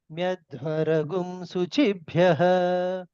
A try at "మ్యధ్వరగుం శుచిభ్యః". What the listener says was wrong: రా మధ్యకే చెప్పాలండి, రా కూడా కిందకే చెబుతున్నారు మీరు. మ్యధ్వరగుం శుచిభ్యః